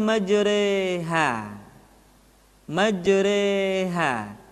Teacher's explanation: habis millahi majroha dibaca imalah dimiringkan Jadi huruf ro beri yang berharakat fathah dibaca miring ke kasrah